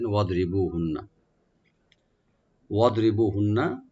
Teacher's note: ওয়াদ মানে ওয়াদ, দোয়াটাকে রাইট দিবেন, কলকলা করবেন না। ওয়াদ রি বলবো, বু একালে টানবেন। আর হুন্না এখানে নুন মুসাদ্দাদ একালে গুন্না করব আমরা, একালে পরিমাণ, টান হবে না।